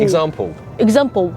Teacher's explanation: So I would turn the L into a O sound.